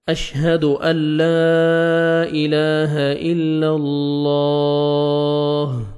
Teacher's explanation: دیکھیں اللہ سبحانہ و تعالیٰ کے نام سے پہلے زبر ہے، آپ نے لام کو موٹا کرنا ہے اور لاسٹ میں ہا ساکن ہو جائے گا، تو ہا کا ساؤنڈ آنا چاہیے